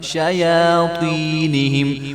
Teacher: یا کے اوپر کھڑا زبر ہے شیاطینہم. اور یہ جو طا کے آگے یا آ رہی ہے یہ یا مدہ ہے، اس کو بھی جو ہے ایک الف کے برابر لمبا کر کے پڑھا جائے گا